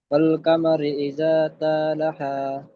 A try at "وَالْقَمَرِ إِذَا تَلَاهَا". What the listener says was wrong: টান দিয়ে ফেলেছেন। তা যাবার তা, টান হবে না, হারাকাত এসছে। ইজা তালা, লাম, লাম খাড়া যাবার লা, টান হবে।